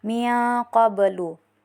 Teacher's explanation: Huruf ba sukun berada di tengah kalimat dan dibaca tidak terlalu ditekan. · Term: qalqalah sugra